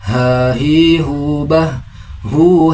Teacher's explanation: Huruf H makhrajul hurufnya berada pada pangkal tenggorokan seperti huruf H. Terasa ada aliran nafas dari hidung namun tidak berlebihan. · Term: huruf ha